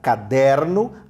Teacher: Observe aqui, sílaba pronunciada mais fortemente, né? Caderno, a sílaba pronunciada com mais força é o der, caderno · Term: paroxítona